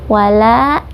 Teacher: Wala dibaca panjang 2 harokat karena mad tabi'i, ada alif bertemu dengan huruf sebelumnya berharokat fathah.